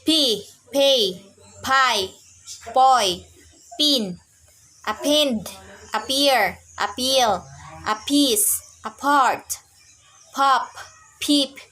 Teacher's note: The bilabial stops. Voiceless bilabial stop.